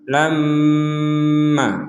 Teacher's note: jadi lamma itu ya lam didengungkan terlebih dahulu baru kita memberikan harakat untuk Ma lam jadi ada minimal dua harakat kita Jedah untuk dengungan ini